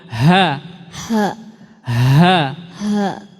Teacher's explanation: huruf ha dia dari pita suara dan udaranya dari dada. Udaranya tertiup dari dada.